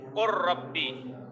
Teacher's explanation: لام را سے بدل جاتا ہے اور مدغم کی کوئی صفت مدغم فی میں باقی نہیں رہتی ہے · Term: ادغام تام